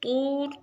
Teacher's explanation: طور طا کو موٹا را کو موٹا